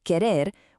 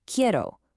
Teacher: Compare the pure infinitive, querer, with the first-person conjugated form for I want, which is quiero. You can hear exactly how that first E morphs into an IE.